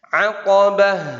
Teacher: Jelas haknya ya. Itu tak marbutoh yang dimatikan sehingga jelas huruf ha. Ya, keluar suaranya huruf ha.